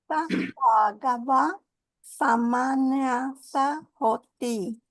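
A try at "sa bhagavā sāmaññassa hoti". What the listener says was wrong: Yeah, great.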